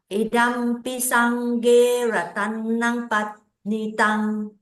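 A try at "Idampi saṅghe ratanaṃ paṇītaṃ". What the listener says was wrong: Okay, panitang. Don't forget your long I.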